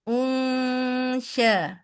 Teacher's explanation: Angkat tengah lidah. Sebutkan nun sukun tapi lidah sudah lidah syin sehingga bunyinya menjadi khas unsya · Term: ikhfa